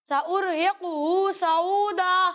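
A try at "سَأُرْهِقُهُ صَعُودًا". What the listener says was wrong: دیکھیں ایک وہی غلطی آپ کی جو میں نے ابھی ہی بتایا کہ قاف پہ کلکلا نہیں کرنا، قاف پہ پیش ہے، اس پیش کو پڑھنا ہے، ٹھیک ہے، سأرہقہ، ٹھیک ہے، اور ہر حرف کو اسی کے مخرج سے ادا کرنا ہے۔ جن حروف میں فرق کرنا ضروری ہے ان میں واضح فرق کریں، پریکٹس کریں، تکرار کے ساتھ پڑھیں۔ ماشاءاللہ سب نے اچھی کوشش کی لیکن پریکٹس جاری رکھنی ہے اور تکرار کے ساتھ پڑھنا ہے، انشاءاللہ یہ جو غلطیاں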